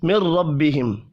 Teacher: را کو زبر کی وجہ سے پر پڑھیں گے